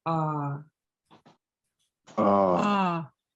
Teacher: So the first sound is a low tone double A, and that's pronounced ah.